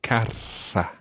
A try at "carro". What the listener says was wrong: Yeah, okay, but with a double R. Carra, carro.